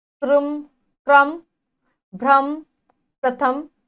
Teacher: जो रा की ध्वनि आएगी वह पहले वाले जो व्यंजन वर्ण होगा उसके बाद आएगी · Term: पदेन